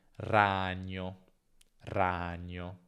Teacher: in alcune varietà del nord la pronuncia può essere più breve